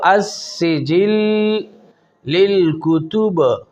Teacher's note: با پر جو ہم نے وقف کی وجہ سے قلقلہ کیا، یہ قلقلہ قوی ہے۔ وقف میں غیر مشدد وہ حروف قلقلہ آ جائیں تو ان پر جو قلقلہ ہوتا ہے قلقلہ قوی ہوتا ہے۔